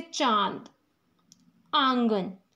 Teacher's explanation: इसका उच्चारण नाक से और गले दोनों से ही होता है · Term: अनुनासिक